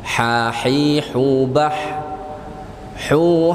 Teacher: maka ha itu harus keluar dari tengah-tengah kerongkongan kita